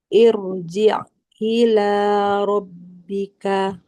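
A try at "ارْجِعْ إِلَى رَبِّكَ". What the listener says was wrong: Ainnya. Irji'. Roknya tebalkan. Irji'.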